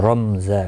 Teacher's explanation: اور را زبر کی وجہ سے پر ہوگا. میم ساکن کے بعد زا آیا ہے، اظہار شفوی ہوگی، یعنی کہ میم کو ظاہر کر کے پڑھیں گے.